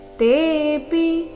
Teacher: ತೇಪಿ ತೆ ದೀರ್ಘ ಪಿ ರಸ್ವ